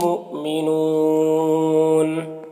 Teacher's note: یہاں پر حمزہ ساکنہ ہے واو کی شکل میں تو جھٹکا لگے گا